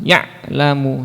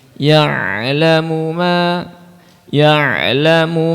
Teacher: Ain sukun itu ada tawasudnya dia sedikit mengalir